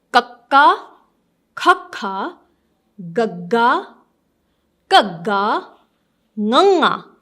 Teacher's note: So the sound comes from the back of your mouth, or you can say the beginning of your throat